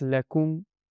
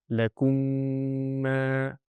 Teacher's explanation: If I read it like this, lakum, and then I have a pause and I say ma straight after it, that wouldn't be the correct pronunciation for this. So when I'm going in a flow of recitation, I have to say the whole thing properly and merge the two mims